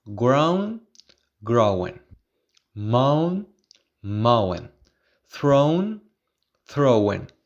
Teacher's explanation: there is a tendency to pronounce some words like ground mound and throne with two syllables and the last syllable contains a schwa